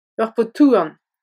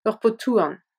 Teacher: Le D de pot se durcit et se prononce T car il est suivi d'un H.